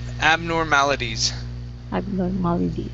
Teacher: switch the T at the end to D sound